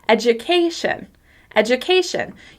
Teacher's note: I'm stressing the second to last syllable.